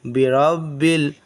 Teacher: را کو تھوڑا موٹا پڑھیں گے اس لیے کہ را پر زبر ہے